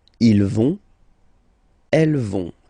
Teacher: remember, final T not pronounced, so you get this ON nasal here